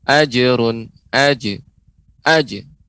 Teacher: pengucapannya tidak sampai ada hamzahnya